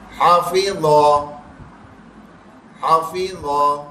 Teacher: یہ ہا درمیان حلق سے نکلے, ذا دانت کی نوک سے موٹا بھی کریں